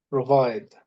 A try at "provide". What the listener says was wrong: Provide, exactly. So be careful.